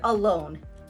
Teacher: Consider the word alone. Now here we have two syllables and the stress is given to the second syllable, lone. In the first syllable, the unstressed syllable, we have the vowel A.